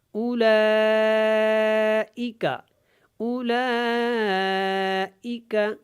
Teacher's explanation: مد کو کھینچ کے پڑھنا ہے، مد متصل ہے یہاں پہ